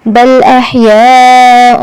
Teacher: یا کو کھینچنا ہے 6 الف کے برابر، حمزہ پر، حمزہ اور واو کو ملا کر پڑھنا ہے اور ان پر اخفا بھی کرنا ہے۔